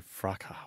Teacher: But they say fraca with a silent S. In Britain, yes, they say fraca.